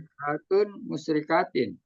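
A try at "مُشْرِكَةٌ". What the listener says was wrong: Panjangin dikit ya. Musyrikatun.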